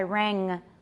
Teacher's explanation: make sure that it's velar and that you're not saying ran.